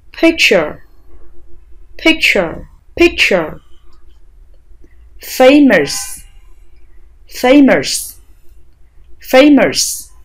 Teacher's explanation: miệng, môi, lưỡi đều thả lỏng và phát âm ơ giống như tiếng Việt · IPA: ə